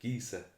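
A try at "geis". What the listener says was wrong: No, I think the SE is an SH sound. Gesh.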